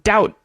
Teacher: in the case of debt or doubt you're not going to ever pronounce that B even if you're saying it slowly